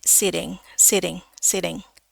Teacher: Nah, ini em di Inggris Amerika biasanya suka dipakaiin T itu kadang-kadang kalau di tengah posisinya dia suka diganti jadi flap D